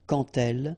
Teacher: when you will have this D, you will phonetically pronounce it like T. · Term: liaison